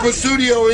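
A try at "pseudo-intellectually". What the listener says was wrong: You do not pronounce the P.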